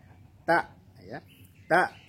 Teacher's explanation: tidak ada suara yang mengalir ketika mengucapkan bunyi Hamzah